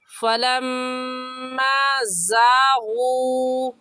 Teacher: سختی سے پڑھنے کا طریقہ یہ ہے کہ دونوں دانتوں کو ملا کر اور زبان کی نوک لگانے سے زا نکلتا ہے، اور زا کو ادا کرتے وقت ہلکی سی سیٹی کی آواز بھی آئے گی، ایسے زا نکلتا ہے، تو ایسے کہیں گے فلما زاغو۔